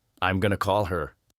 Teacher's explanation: call her almost becomes caller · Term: connecting words